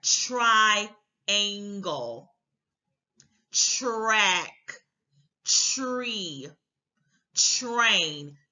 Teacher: You just get them to get used to making the tr sound because that sound, and I don't really understand why they call it TR because phonetically, the TR to me sounds like almost a CH and an R together. You don't really get a true T sound in the tr to me, but by saying tr, that ch sound in the beginning of it makes it easier for the child to curl that tongue to get R.